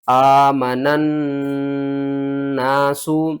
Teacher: آمن الناس، حمزہ کھڑا زبر آ، میم زبر ما، نون، نون زبر نن، نون الف زبر نا، سین بیسو، آمن الناس۔ نون کو ہم نے اس دوسری نون کے ساتھ ملانا ہے، درمیان میں الف اور لام جو ہے نا ان کو آپ نے چھوڑ دینا ہے